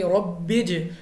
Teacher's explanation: جیم ہمارے پاس قلقلہ میں سے ہے، کیونکہ قلقلہ حروف کو ہم نے واپس نکلتی آواز کے ساتھ پڑھنا ہے، تو ہم اس طرح پڑھیں گے ربج 2 بار، یعنی آواز ہماری واپس نکلتی ہم کو محسوس ہو۔